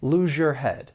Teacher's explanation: Hopefully you can hear that slight zh sound. · This is when 2 sounds blend together to create a new sound. So the final consonant sound in lose may blend with the beginning consonant sound in your, and you get this slight zh sound. It's like we're going to put it right between the words, and that allows us to connect them together. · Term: assimilation